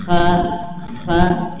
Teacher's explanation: Ha ini berada di tenggorokan bagian tengah, yang enggak boleh ada gesekan di tenggorokan ya. Ha ha ya, tapi ha ya, dialirkan nafas dan suara.